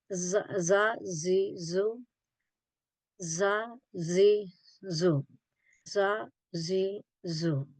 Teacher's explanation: These are pronounced from the tip of the tongue touching the inner edge of two top teeth and two bottom front teeth.